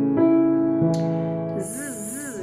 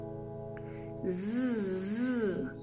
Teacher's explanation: Je dois sentir le Z qui va venir vibrer au niveau des pommettes et peut-être même dans la gencive supérieure. · le bout de la langue est derrière les dents du haut